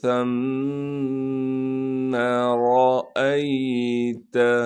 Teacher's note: सा को बारीक करके पढ़ेंगे और सा को आगे मीम से मिलाएंगे, इसलिए कि मीम पर तशदीद है।